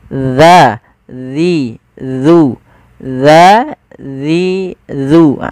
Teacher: ujung lidah kita menempelkan dengan gigi seri atas kita